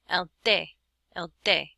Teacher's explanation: It's definitely not like a T. And again, your tongue touches the back of your front teeth, and there's no puff of air